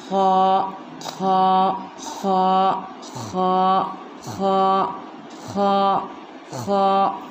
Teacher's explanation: खा का मखरज है हलक के मुंह के तरफ वाले हिस्से से, यानी हलक के हम अगर 3 हिस्से करें तो एक हिस्सा अपना हलक के मुंह की तरफ आता है और एक हिस्सा बीच में जाता है और एक हिस्सा नीचे की तरफ। तो हम हलक के मुंह के तरफ वाले हिस्से से इसको अदा करेंगे। थोड़ी खुरदुरी आवाज़ आती है इसमें